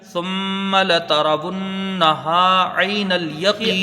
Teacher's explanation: میم مشدد ہے اور میم کو پھر جلدی پڑھا جائے گا